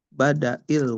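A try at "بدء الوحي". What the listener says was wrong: Badai bacanya ya, dalnya suku. Badai.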